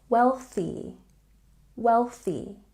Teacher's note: And don't forget we have the TH sound. Put your tongue between your teeth.